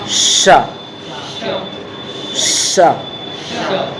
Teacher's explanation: हमारे जो ऊपर वाले दांत हैं, हमारे जो ऊपर वाले दांत हैं, उन दांतों के ऊपर जो मसूड़े हैं, यानी ऊपर के दांतों के मसूड़े, उन मसूड़े के स्थान को जब टच करेगी हमारी जीभ तो उस समय ये वाला शा का उच्चारण होगा।